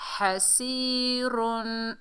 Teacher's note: हा को हलक के दरमियान से अदा करेंगे और ज़बर है बगैर खंचे पढ़ेंगे।